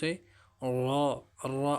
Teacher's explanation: जबान की पुश और अगले दोनों दांतो के मसूड़ों से र अदा होते है · زبان کی پش اور اگلے دونوں دانتوں کے مسوڑوں سے را ادا ہوتے ہیں